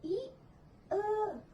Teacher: Di bagian ini ada vokal depan, yang dimana bagian depan lidah dinaikkan